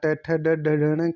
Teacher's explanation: Next, ड का उच्चारण स्थान है, तो ड का जो उच्चारण स्थान है वो मूर्धा हो जाएगा। ट ठ ड ढ ढ का जो उच्चारण स्थान होता है वो मूर्धा होता है